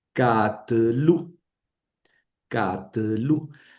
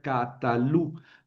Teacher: La vocal de la última sílaba se elide, se pierde y se convierte en sheva.